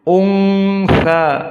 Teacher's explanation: gunnah makhrajnya dari khayshum, dari hidung